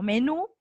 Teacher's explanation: es una aguda porque la fuerza de voz está en la última